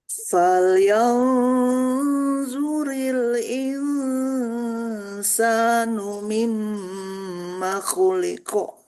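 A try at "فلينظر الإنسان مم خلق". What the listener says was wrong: Masya Allah. Ya, insya Allah sudah bagus.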